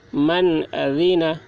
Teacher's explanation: نون ساکن کے بعد حروف حلقے میں سے عین آ رہا ہے، اس لیے نون ساکن کو ظاہر کر کے بلا غنہ کے جلد پڑھیں گے